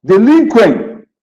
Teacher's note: Delinquem, opa, eu tenho uma semivogal e uma vogal, mas o M não é semivogal. Ele tem som de Y, né? Ele é nasalizado. Então, aqui o M funciona como uma semivogal.